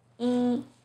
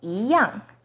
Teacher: 一 as in number 1 is pronounced as 一, but in 一样, it becomes the second tone